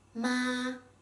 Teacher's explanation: when you assign the first tone to it it's pronounced ma with a flat and high pitched tone